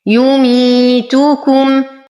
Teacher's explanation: نصبر على الميم بعدها حرف الثاء فالحكم إظهار شفوي بدون غنة